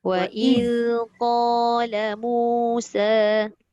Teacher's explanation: Dia punya z tak boleh bunyi.